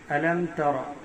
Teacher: را کے اوپر زبر ہے، را کو پر پڑھیں گے، را موٹا کریں گے، یعنی باریک نہیں